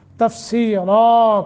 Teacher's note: را رن کر کے نہیں رکنا بلکہ نون تنوین کو ختم کر کے الف پہ رکنا ہے